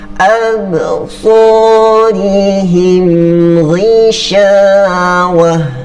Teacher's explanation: Mim mati lagi bertanda sukun bertemu dengan huruf ghain. Maka terjadi juga izhar syafawi, tidak perlu didengung.